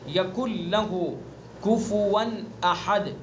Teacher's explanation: यकुन लहू ऐसे नहीं पढ़ेंगे बल्कि नून का लाम में इदगाम कर देंगे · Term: इदगाम ताम